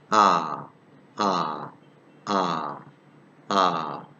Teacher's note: this vowel is pronounced with the lips in a completely open and unrounded position